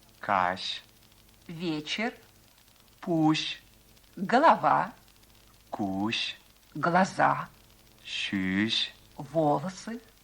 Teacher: Звук «ш», мягкий, щелевой, согласный, произносится как очень мягкий «ш».